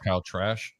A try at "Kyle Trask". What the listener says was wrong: Trask, not Trash, but yeah,